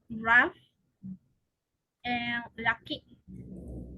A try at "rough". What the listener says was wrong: Con A. No, no es con A. It's a schwa. It's rough, not rough. Rough. Close your mouth. Rough.